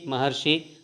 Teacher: ಈ ದೀರ್ಘ ಸ್ವರ ಬಂದಿದೆ ಸವರ್ಣ ದೀರ್ಘ ಸಂಧಿ ಮಹಾ ಕೂಡಿಸು ಋಷಿ ಮಹರ್ಷಿ ಅಕಾರ ಇದ್ದಾಗ ಋಕಾರಕ್ಕೆ ಅರ್ಕಾರ ಬಂದಿದೆ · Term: ಗುಣಸಂಧಿ